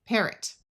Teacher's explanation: This O will schwa which means it will take on a muffled sound that sounds like a short u sound of uh or a short I sound of I parrot.